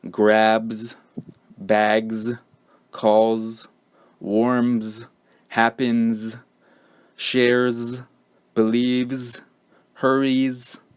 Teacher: end with s and are pronounced like Z so for example grabs bags calls warms happens shares believes hurries